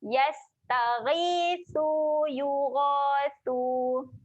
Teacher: Sa huruf dia kena jeli lidah. Jangan lupa keluarkan lidah. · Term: huruf sa